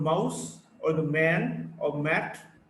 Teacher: M, which is voiced bilabial nasal.